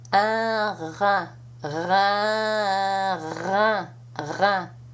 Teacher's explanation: for the nasal vowel, the uvula is down, the back of the tongue is slightly down to allow the uvula and the soft palate to move down so that the air can flow through the nasal passages. And yet somehow you still have to pronounce the R back here. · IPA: /ɛ̃-rɛ̃/